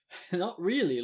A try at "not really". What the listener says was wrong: Did you just say cannot? Cannot really. It sounded like you just pronounced "not" like it had a K in the front of it. It's cannot. No, you say cannot.